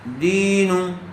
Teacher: لام زبر لا، کاف میم پیش کم، لکم، دال یا زیر دی، زیر والے حرف کے بعد یا ساکن آیا ہوا ہے، اس لیے یا مدہ ہوگا، اس کو تھوڑا کھینچ کر پڑھیں گے